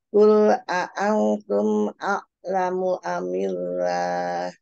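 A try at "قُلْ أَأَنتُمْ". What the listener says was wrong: Ya, ikfa jangan lupa ditahan dulu, Kul a'antum.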